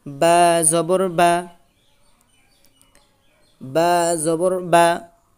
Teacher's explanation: বা হরফটি আদায় হবে দুই ঠোঁটের ভিজা অংশ থেকে।